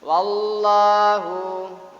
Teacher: harokat fathah menghadapi lam jalalah, maka lam jalalah dibaca tafkhim